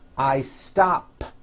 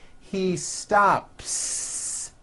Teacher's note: I stop ends with an unvoiced P. P, p. I stop.